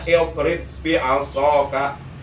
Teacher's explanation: Oleh karena di depannya ada huruf yang sama yaitu ba, maka ba pertama wajib diidghamkan ke ba yang kedua. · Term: idgham mutama silain